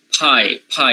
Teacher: the voiceless stops become aspirated that means they are pronounced with certain puff of air